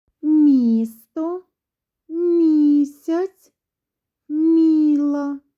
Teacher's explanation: На початку цих слів ми чуємо звук Мь. Отже, перед голосним і звук м пом'якшується, а пом'якшені звуки на схемах ми будемо позначати двома рисочками.